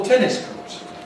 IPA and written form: ˈtenɪs kɔːt (tennis court)